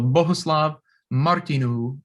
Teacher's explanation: This is a Czech name, and it just means to hold that U a little longer. Every word in Czech has stress on the first syllable, so Bohuslav Martinů, and you just hold the U a little longer.